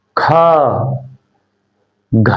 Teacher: ज्यादा हवा निकली, बोल के देखो, ज्यादा हवा निकली है, का गा में कम हवा निकलेगी और ख घ में ज्यादा हवा निकलेगी। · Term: महाप्राण